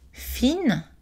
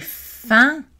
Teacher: Fine, féminin grammatical, pas nasal, mais fin, masculin grammatical, nasal.